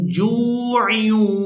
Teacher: یہاں پر ہم نے جیم کو واو ساکن کے ساتھ ملاتے ہوئے کھینچ کر ادا کرنا ہے کیونکہ یہ واو مدہ ہے